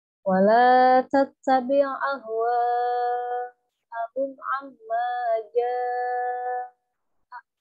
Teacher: Kalau ini mad jaiz ini adalah mad wajib muttasil. Kalau mad wajib muttasil itu hukumnya harus 6 harkat ya. Panjangnya harus 6 harkat wajib.